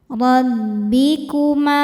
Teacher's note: Huruf ro dibaca tafhim karena berharakat di atas yaitu harakat fathah. Cara bacanya ditebalkan.